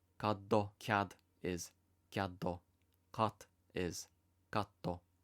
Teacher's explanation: these don't devoice, so we'll end up with an unwanted O vowel sound at the end.